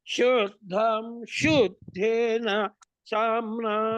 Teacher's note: శుద్ధం శు అనుదాత్తం చెప్పాలి.